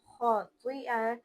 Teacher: खौ और त्वा को पुर पढ़ेंगे और खौ की वजह से अलिफ भी पुर ही लगेगा